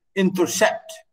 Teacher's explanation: Two unstressed syllables followed by a stressed syllable. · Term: anapest